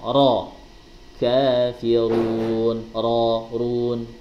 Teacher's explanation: takrir yang ada pada huruf ra, yaitu sifat getaran lidah depan